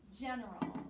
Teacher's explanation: the accent is on the first syllable · schwa sound where the vowel doesn't really say what it should the last syllable the AL that makes the schwa sound